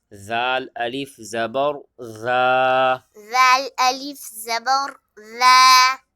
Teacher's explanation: آگے الف مدہ ہے، الف سے پہلے زبر ہے، ایک الف کی مقدار کھینچ کے پڑھیں گے.